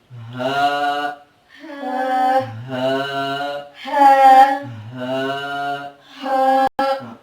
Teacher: یہ نہ حلق والی آواز ہوگی اور نہ ہی خراش والی آواز ہوگی، بلکہ یہ بالکل ہلکی سی آواز میں، یعنی کہ ایسی آواز میں جس سے سینے کے اندر ایک گونج سی پیدا ہوگی